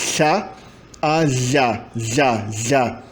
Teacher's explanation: É uma vibração na lateral da língua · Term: fricativa lateral